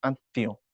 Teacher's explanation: যখন তর সাথে ম যুক্ত হয় তখন তর উচ্চারণ ডাবল হয়ে যায়